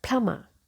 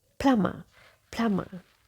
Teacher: And in British pronunciation, we keep letter R also silent. Letter B also silent.